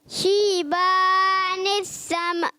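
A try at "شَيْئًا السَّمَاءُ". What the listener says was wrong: نہیں شیبا کو کھینچنا نہیں. شیبن السماء بیٹا آپ یہاں سے جو ہے نا آپ نے کیا کرنا ہے، سین دان ملا ہے سین. آپ زبان اگر اوپر لگا دیں گے تو بن جائے گا سا. شیبن السماء غلط ہو جائے گا.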